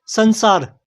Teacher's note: इसमें अनुस्वार के बाद स आया है। जो स अक्षर होता है वह पै वर्ग का अक्षर नहीं है। इसी कारण से अनुस्वार की ध्वनि आधे न जैसी सुनाई देती है।